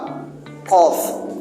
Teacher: Ini bunyi langit-langit belakang. Tutupan bersuara tebal. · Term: alqof